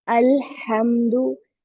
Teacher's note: There is no bouncing sound because it is not लेटर of कलकला। ठीक है, ये कलकला का लेटर नहीं है, तो इसलिए यहाँ पर कलकला नहीं करना, बाउंसिंग साउंड नहीं लाना, लाइक हाफ दमा साउंड।